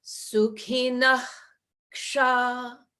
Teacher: So the first visarga is in the throat.